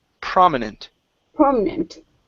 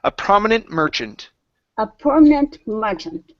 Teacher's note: permission good good nice job uh next up we have prominent the stress here is at the very beginning